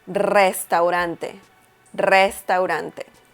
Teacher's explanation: if the letter R is at the beginning of the word, that means that you have to pronounce that R a little strong, just like the double R. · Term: strong R sound